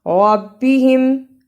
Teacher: را کو موٹا پڑھا